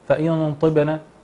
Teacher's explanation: نلاحظ أن الطاء مفخمة تفخيما كاملا وليس تفخيما نسبيا